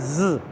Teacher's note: زے کو پڑھتے ہوئے سیٹی کی آواز آئے